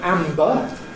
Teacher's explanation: it doesn’t need the lips to move, because the lips are already together for the /m/. · So the crucial change as we go from /m/ to /b/ in /ˈæmbə/ is that of the soft palate.